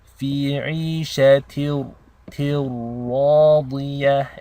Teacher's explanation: It's called assimilation. Basically your ta is connected directly into the ra, as if the tanween is dropped. So there is no noon sound. It's a direct assimilation. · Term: idgham